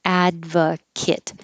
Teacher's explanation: the ate ending can be kit if it's a person or an adjective